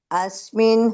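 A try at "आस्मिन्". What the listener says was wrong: ఇక్కడ అస్మిన్ అనకుండా ఆస్మిన్ అనండి.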